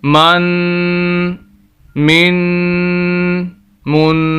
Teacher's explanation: تو یہ من جو ہے ناک میں آواز جاری سے غنہ کہا جاتا ہے۔